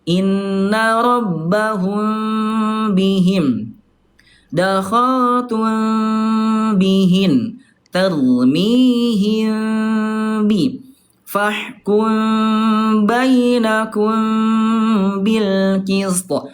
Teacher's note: cuma nyentun doang karena dia samar ya ikhfa syafawi namanya tidak betul-betul ditekan